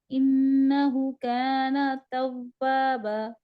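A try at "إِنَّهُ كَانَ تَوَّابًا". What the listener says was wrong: इन्नहु 2 हरकत पे लंबा होगा, उल्टा पेश है। इन्नहु काना, नहीं अभी तक नहीं, वाव को होंठ गोल करके पढ़े और डबल तव्वाबा।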